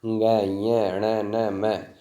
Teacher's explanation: उसके बाद नासिका, ये हम पहले पढ़ चुके हैं कि जहाँ पर हमारी ध्वनि मुख और नासिका दोनों से आती है